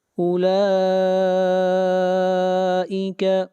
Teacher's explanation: مد متصل لا کے اوپر کھینچ کر پڑھیں گے 3 الف کے برابر